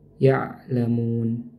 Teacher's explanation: Huruf ain ini makhrajnya di tenggorokan ya. Tenggorokan bagian tengah bersama dengan huruf ha. Ya'lamun. Jadi bukan dari hidung ya.